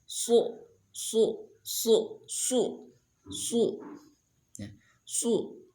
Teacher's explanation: kalau sod isti'la, su, berarti si pangkal lidah naik, ya, terangkat ke atas